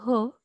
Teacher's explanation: स्वरयंत्रातील कंठद्वारातून ज्या स्वनांचे उच्चारण होते ते कंठद्वारीय स्वन होय.